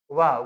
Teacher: दंत और ओष्ठ से इसका उच्चारण होता है वाह।